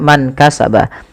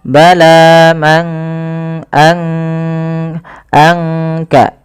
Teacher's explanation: disamarkan suara nunnya kepada huruf kaf. Mangka, angka, langsung kepada makhraj daripada huruf kaf itu sendiri. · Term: ikhfa